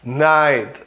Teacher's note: E repara, ó, night, o T é quase mudo também, né? Night, aquele T que é feito com a pontinha da língua encostando na pontinha do dente por trás